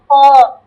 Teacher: হ্যাঁ খ, খ খ একটু মোটা করে হবে, খ। খ একদম গলার শেষ অংশ থেকে খ